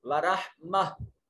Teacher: گول تا جو ہے یہ وقف کی حالت میں ہا میں بدل جائے گی